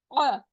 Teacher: हमजा हमारे सबसे नीचे वाले हलक से निकलता है